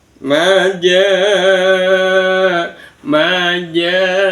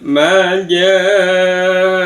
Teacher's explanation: Dibaca lima harakat, lima gedukan. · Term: mad wajib muttasil